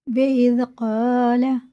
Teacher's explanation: بِإِذْ قَالَ، زال کو ہم باریک پڑھیں گے، الف سے پہلے زبر ہے تو اسے ایک الف کے برابر کھینچ کے پڑھیں گے